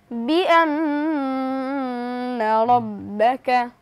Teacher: এখানে নুনের উপর তাসদীদ এসেছে অর্থাৎ ওয়াজিব গুন্না, আমরা গুন্নার সহিত পড়ব